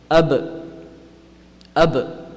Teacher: When pronounce ab, you'll notice that it's when the wet portions of the lip, when they come together, that's how ba is pronounced